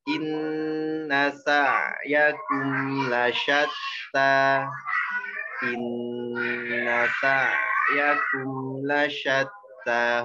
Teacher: Ingat, ain itu tipis, nggak tebal suaranya